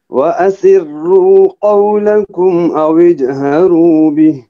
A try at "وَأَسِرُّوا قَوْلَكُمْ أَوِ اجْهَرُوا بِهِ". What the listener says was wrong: وَأَسِرُّوا را موٹا پڑھے. وَأَسِرُّوا قَوْلَكُمْ أَوِجْ قلقلہ أَوِجْهَرُوا بِهِ. پھر پڑھے آپ وَأَسِرُّوا راکو جی أَوِجْهَرُوا بِهِ